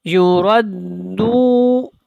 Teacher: یا پیش یو، را دال زبر رد، دال واو پیش دو، یوردو، یوردو، را پر ہے، اور جب را کو دال کے ساتھ ملانا ہے تو بڑی پختگی کے ساتھ اس کو ادا کرنا ہے، کیونکہ یہاں پہ شد ہے، اور دو کو تھوڑا سا لمبا کریں گے کیونکہ یہ حروف مدہ میں سے ہے